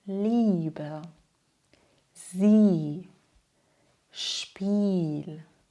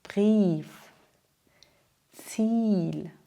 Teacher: Das bedeutet, IE spricht man wie ein langes I. Also ganz ruhig und lang.